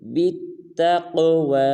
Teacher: اس میں قاف کو پر بھی ادا کرنا ہے اور قلقلہ بھی